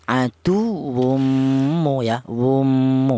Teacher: Idgham itu artinya menyatu atau melebur yaitu cara bacanya tanwin ini cara bacanya langsung disatukan ke huruf mim ini